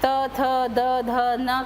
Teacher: त थ द ध न कहते हैं तो जीभ दांतों के पास आकर रुक जाती है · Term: त वर्ग